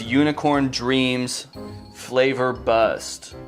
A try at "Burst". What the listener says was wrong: It's burst. You said buster. It's burst.